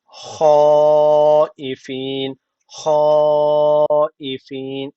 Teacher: hadır usulünde okuduğum için iki Elif miktar uzatmam lazım yani şöyle hafin hafin derken bakın çeker var uzatıyorum sonra da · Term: meddi muttasıl